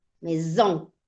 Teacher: La S entre vocales suena como el zumbido de una abeja. · Tiene una S Exacto. entre dos vocales, entonces suena más arrastrado, como zzz, como zumbido